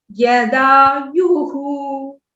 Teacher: यदायुहु में दा के ऊपर स्वरिता लगा लेते हैं कुछ लोग, लेकिन यहाँ यू के ऊपर है स्वरिता